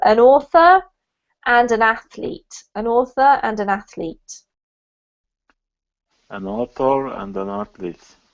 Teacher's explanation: connected her sounds really well with the end consonant and the beginning vowel